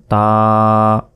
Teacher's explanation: খারা জবর, তাই এখানে 1 আলিফ পরিমাণ টেনে পড়তে হবে।